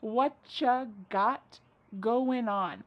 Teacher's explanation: Whatcha is what plus you. U becomes cha.